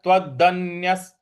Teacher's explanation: त के बाद जो आधा न है उस पर हमको आघात देना है